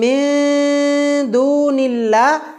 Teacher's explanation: আসবে তখন আমরা গুন্নাটা নুনের মাখরাজ থেকে আমরা জিহবাটা আগিয়ে রাখবো নুনের মাখরাজে আমরা জিহবা লাগাবো না বাংলায় অনেস্বারের মত উচ্চারণ করে গুন্না করব এখানে নুন সাকিনের পরে আর ত বর্ণটি নুনের মাখরাজের কাছাকাছি এইজন্যে